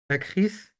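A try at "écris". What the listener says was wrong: যে না, ওই লাস্টের আর যখন যোগ করছেন ওটা তো আর উচ্চারণ আসবে না, উচ্চারণে যে খি বলতে থাকবে, তাই না? এসটা হবে না। যে খি কেন হলো বুঝতে পারছেন কি? দুইটা ভাওয়াল পাশাপাশি ছিল, তাই না? এই যে জোর সাথে একটা ভাওয়াল ছিল না, এই যে দুইটা ভাওয়াল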